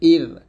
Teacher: র সেকেন্ডের ডাইনে যখন জের আসবে তখন রটা পাতলা হবে